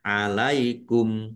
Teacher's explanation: Alaikum waqaf dan dibaca pendek kumnya ya. Dibaca pendek karena tidak ada tanda panjangnya.